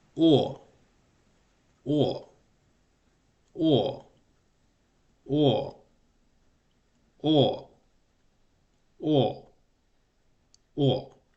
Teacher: The protrusion of the lips determines the ooh like sound in the initial phase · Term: vow o